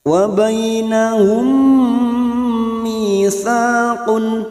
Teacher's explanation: mim sukun bertemu mim idgham mimi, siap masuk ke huruf mim berikutnya dan mendengung selama 2 atau 3 harokat. Wa bainahum mitsaqun, mi kasrah diikuti as-sukun 2 harokat, sa fathah diikuti alif, masing-masing 2 harokat matabi'i.